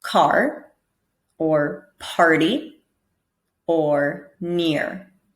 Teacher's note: this soft R sound is much more subtle than the strong R, and it acts more like a vowel